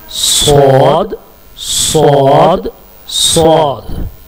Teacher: जुबान की नोक सामने के ऊपर और नीचे के दांतों के दरमियान में आ जाए तो स्वाद होगा। और स्वाद की जो आवाज़ है वो सीन के मुकाबले में थोड़ी सी भारी होती है और थिक होती है, मोटी होती है।